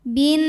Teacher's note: Nunnya hukumnya adalah gunnah musyaddadah karena nun bertasydid. Cara bacanya didengungkan, tahan dengungannya kurang lebih 2 harokat.